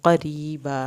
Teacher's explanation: रा को यहाँ पे पतला पढ़ेंगे क्योंकि रा के नीचे ज़ेर आ गई है, अलिफ पूरा पढ़ा जाएगा।